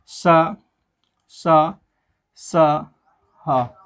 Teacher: हवा जो है मुख के अंदर से निकल रही है लेकिन रगड़ खाती हुई निकल रही हो, मानो जीवा पर उसका घर्षण हो रहा हो, एक उष्मा निकल रही हो अंदर से, एक गर्म हवा निकल रही हो। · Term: उष्म व्यंजन वर्ण